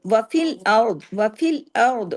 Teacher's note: را جو ہے وہ پچھلے زبر کے ساتھ پڑھا جا رہا ہے، اس کے زیر اثر ہونے کی وجہ سے ہیوی